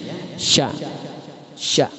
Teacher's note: makhrajul huruf bagian al-lisan, tepatnya di tengah-tengah lidah · Bunyinya keluar dari tengah-tengah lidah serta menepati langit-langit mulut yang tepat di atasnya. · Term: huruf sya